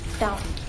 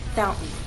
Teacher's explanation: When I say the word fountain, I'm using a glottal stop.